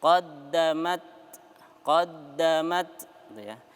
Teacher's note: Di situ ada huruf ta ya yang bersukun ya. Maka kita baca syiddah kuat tetapi dia mengalirkan nafasnya.